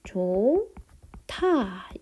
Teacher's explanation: 히읗과 디귿이 만나서 티읕이 하나 남은 거죠. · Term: 거센소리 대기